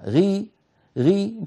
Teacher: الأمر الثاني مكسورة، والكسر دائما يضعف الحرف، فغي هي في أقل مراتب التفخيم بدون مبالغة · الغين بعدها هي من حروف الاستعلاء لكنها مستعلية غير مطبقة